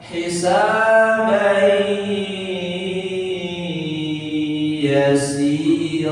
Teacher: Setiap tanwin bertemu yanmu, maka hurufnya langsung masuk ke huruf yanmu tersebut. Tanwin bertemu huruf ya, masuk huruf ke ya. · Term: idgham bigunah, idgham bi gunnah